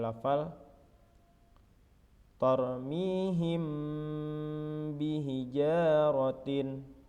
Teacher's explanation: mim sukun dibunyikan samar-samar di bibir dan didengungkan